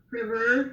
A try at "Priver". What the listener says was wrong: Priver. It's Priver with a more long E.